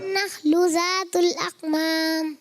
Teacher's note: ज़ातुल अकमाम में काफ मोटा नहीं होना चाहिए।